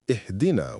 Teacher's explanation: Some read it as Ahdina, turning "guide us" into "give us a gift." The correct, meaningful plea is Ihdina with the hamza of connection and the clear kasra at the start, ih.